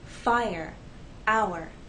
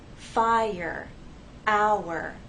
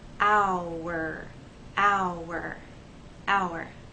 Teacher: we have two vowel sounds and there is a gliding but there isn't a joining to make one vowel sound The Vow sounds remain separate here the first sound is i